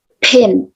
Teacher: Like we blow H from the P. Pin. It's called aspirated.